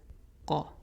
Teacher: Take the first consonant sound, add the ah because it's heavy, one of the heavy letters, and we get qa, short because it's a short vowel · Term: qaf